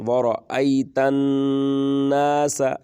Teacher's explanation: ورأیت الناس، یہاں پر ادغام ہوگا، ادغام بالغنہ، یعنی غنے کی آواز سنائی دے گی